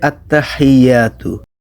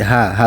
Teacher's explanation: লম্বা হা উচ্চারণ করতে হয় গলার ভেতর থেকে, মুখ দিয়ে না।